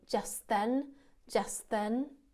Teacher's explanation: again i'm not including the t after just